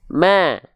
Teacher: dengan sifatnya adalah infitah Nah kita analogikan dengan cara tersenyum Biasanya kalau saya pribadi melafalkan dengan sedikit senyuman sifat istifal dan infitahnya ya itu akan lebih termaksimalkan sehingga bunyi tipisnya lebih terasa